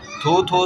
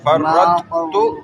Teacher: آخر میں تو ہوگا لیکن اس سے پہلے تھو کی ہلکی آواز آئے گی